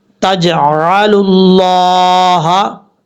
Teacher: پر سے مراد یعنی موٹا پڑھا جاتا ہے، فل ماؤتھ پڑھا جاتا ہے۔ اب یہاں پر لفظ اللہ سے پہلے لام کے اوپر پیش ہے، اس لیے لفظ اللہ کو پر پڑھیں گے، موٹا پڑھیں گے